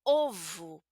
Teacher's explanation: en nuestra variación de Brasil eh vamos a pronunciar esta segunda o como una u